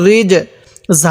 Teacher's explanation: এই জিমটা একটু ধাক্কা দিয়ে পড়বো কারণ জিমটা হলো কলকলা হরফ